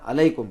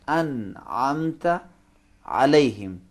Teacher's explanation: عین عربی میں حلق کے درمیانی حصے سے زور لگا کے، پریشر لگا کے حلق کی دیواروں سے ذرا سختی سے نکالیں گے.